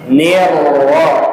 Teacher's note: Ni-nya tipis, ro-nya tebal.